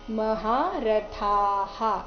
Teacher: ಥ ಆದ ನಂತರ ಬರೋ ವಿಸರ್ಗದ ಉಚ್ಚಾರಣೆ ಹ ಅನೇ ಬರಬೇಕು